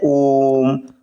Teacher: इनके उच्चारण में एक मात्रा का तिगुना समय लगता है। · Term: प्लुत स्वर